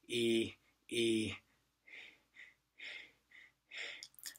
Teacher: eventually you want to drop the phonation, you want to drop the vocal cord sound